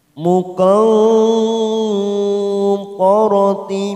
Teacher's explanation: Kita samarkan bunyi nun sukun 3 ketuk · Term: ikhfa aqrab